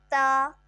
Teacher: زبان کی نوک ثنایا علیہ کی جڑ سے لگتی ہے تو تا ادا ہوتا ہے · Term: حروف نطاعیہ